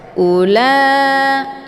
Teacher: di sini ini merupakan W ziadah Jadi bukan wau huruf mad Jadi enggak usah dibaca panjang hamzahnya cukup dibaca satu harakat saja